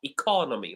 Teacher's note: So the word economy, the second syllable is stressed. So we have e, co, no, me.